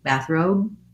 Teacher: we may or may not release that b sound i'm not necessarily going to say bathrobe with the strong b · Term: unreleased